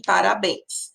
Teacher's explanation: Eu tenho o E com som, né, nasalizado, mas eu tenho a companhia do I e do S.